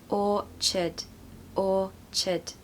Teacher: You need the word or. Don't pronounce the R, remember? So it's like orchard. You need a schwa in the second part.